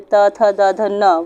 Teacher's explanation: दंतव्य, दंतव्य से ता वर्ग, यानी कि जो ता वर्ग होता है, ता, था, दा, ध, न, वो दंत से बोले जाता है